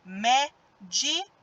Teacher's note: A sílaba mais forte é o mé. Então, ó, o co é a última, o di é a penúltima e o mé é a antepenúltima. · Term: proparoxítona